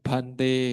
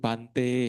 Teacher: Ya, ataupun sebaliknya ya, kalau misalkan tadi adalah yang tidak keluar angin, dia baca sebagai keluar angin, kebalikannya juga sama, berarti kamawacanya tidak berlaku juga. Misalkan yang harusnya keluar angin, dia baca tidak keluar angin. Contohnya harusnya bante ya, tapi dia bacanya menjadi bante ya.